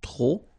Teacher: don't pronounce the final P